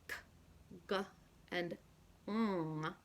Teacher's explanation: We use the back of the tongue against the velum to produce sounds k, g, and ng